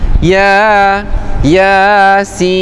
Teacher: Ya 2 harakat kan? Itu namanya mad asli harfi.